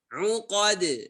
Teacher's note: Jangan lupa huruf qaf tebal, dalnya tipis, qalqalah kubra.